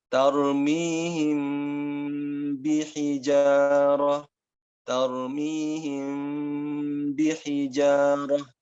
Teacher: Jadi seolah-olah kita menahan mim, sampai kita menahan bibir ketika mengucapkan mim, sampai kita ketemu ba. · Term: ikhfa